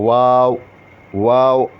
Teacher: مطلب واو کو جب آپ دونوں ہونٹوں کو گول کریں گے تو اس سے واو واو یہ ادا ہوتا ہے.